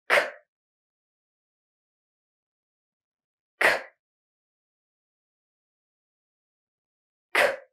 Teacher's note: Let's now focus on pronouncing this final K sound in English. So it's voiceless. You're not going to use your voice. No vibration in your throat. Your tongue is up there and you're going to push out some air and you're going to push out a little bit more air because it's final. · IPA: /k/